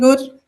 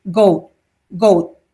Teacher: So I'm very bad at producing all British goat vowels because I have a very Indian goat vowel but um goat so a standard um slightly fronting goat contrasts very audibly with goat goat a back backing one